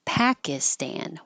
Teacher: The I in the middle is not stressed, so it will change to an I as in it or an as in up and be much shorter.